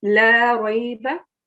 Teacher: so lam has alif, so you're meant to prolong it